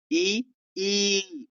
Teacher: स्वरों में जीभ, होठ और जबड़ा विभिन्न स्तरों पर उठते हैं, झुकते हैं, जिसमें विभिन्न ध्वनियां बनती है। जैसे कि ई, जीभ आगे उठती है